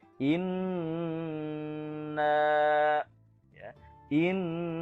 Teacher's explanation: ditahan ya panjangnya sekitar satu setengah Alif atau tiga harokah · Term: gunnah